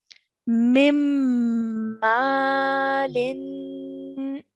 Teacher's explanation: i'm joining the meme to the meme mushad holding the nasal sound holding that ronna sound in my nose and then letting it